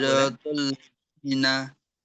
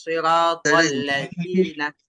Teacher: সিরাতাল্লাযিনা, একদম জিহ্বার আগা থেকে, জিনা চিকন হবে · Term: জালের উচ্চারণ চিকন